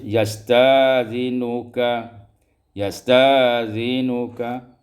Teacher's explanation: ibdalul hamzati alifan, tukarkan hamzah alif